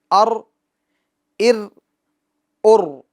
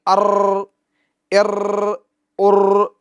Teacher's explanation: تکرار ہوگی مگر مشابہت تکرار ہلکی سی ہوگی، اس بات کا ہمیں خیال رکھنا۔ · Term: کپکپاہٹ